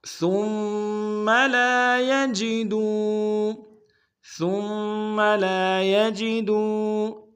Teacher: ثم میں سا کو میم کے سامنے لائیں گے، سا کو باریک ادا کریں گے، میم کے اوپر تشدید زور دیں گے.